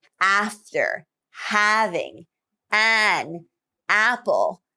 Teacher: the low front vowel as in after having an apple to illustrate this widening of the mouth